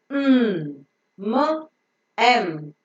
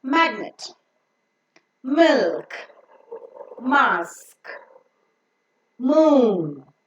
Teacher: in order to enable the air to go through the nose the soft palate is lowered so that the air can pass only through the nose and not through the mouth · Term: nasal sound